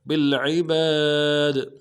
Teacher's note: بصیر بالعباد با کو لام کے ساتھ ملائیں گے, عین کو موٹا کریں گے, اور با کے ساتھ الف مدہ ایک انداز میں کھینچیں گے, دال کو ساکن کریں گے, قلقلہ کریں گے.